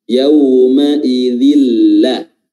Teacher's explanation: Jangan ditahan dan juga jangan berdengung. Dia huruf lamnya itu khalis, huruf lamnya itu jelas dan tanpa ada dengungan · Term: idgham bila gunnah